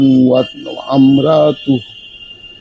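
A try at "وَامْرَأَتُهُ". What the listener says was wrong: ওয়া আমরা না, ঠিক আছে, ওয়াও মিমকে ধরতে হবে। এখানে আলিফ উচ্চারণ কোনোভাবেই করা যাবে না।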